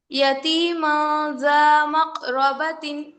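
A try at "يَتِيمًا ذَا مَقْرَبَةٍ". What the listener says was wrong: را کو پر کیجیے. یتیما ذا مقرا، مقرا، مق، حروف قلقلہ. مقرا.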